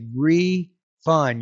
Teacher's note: You need to make that stress, that first syllable more stressed than the, uh, second one.